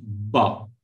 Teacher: you are holding the air within your mouth and releasing it suddenly Bob right so air is not smoothly flowing you are controlling